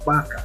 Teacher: Entonces hay una fricación, si ustedes notan hay un pequeño sonido que hace, hay una vibración pequeña al momento de salir el aire y se produce en el labio y el diente